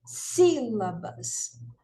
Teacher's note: veja que o si a gente pronuncia com mais força com mais intensidade né o som é mais forte do que as demais então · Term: sílaba tônica